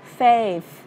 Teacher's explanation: Lưỡi dưới hai răng mà đẩy hơi ra nha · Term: âm th